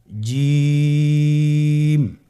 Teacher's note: জিহ্বার মধ্যখানটা লক্ষ্য করুন এবং তার বরাবর উপরে তালুর সঙ্গে লাগান, এরপর হরফটি উচ্চারণ করুন, দেখবেন হরফটি শুদ্ধভাবে উচ্চারিত হবে।